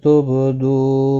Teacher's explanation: با ساکن پر قلقلہ ہوگا، دو واو مدہ ہے، ما الف مدہ ہے، دونوں کو ایک ایک الف کی مقدار کے برابر کھینچ کر پڑھیں گے۔